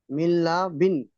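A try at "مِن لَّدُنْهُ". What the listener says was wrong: দেখেন, বারবার একই ভুল আমি বলে দিচ্ছি, যে কেটে কেটে বানানের পদ্ধতিটা আপনারা সঠিক করে একটা করে অক্ষর পড়বেন, একটা করে মেলাবেন। প্রথমে নুনটা পড়েছেন মিম নুনজের মিন, তারপর লাম পড়েছেন লাম জবর লা, মিল্লা, তিনটে একসাথে মিলিয়ে নিতে হবে।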